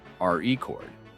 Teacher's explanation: in the word record, the stress is on the first syllable